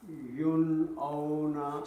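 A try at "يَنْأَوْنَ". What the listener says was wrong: So the ya has a fatha. So yan.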